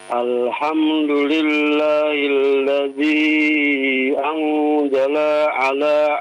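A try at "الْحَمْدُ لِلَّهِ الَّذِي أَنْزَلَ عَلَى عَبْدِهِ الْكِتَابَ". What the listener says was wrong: lihat panjang pendeknya. Ulangi kembali.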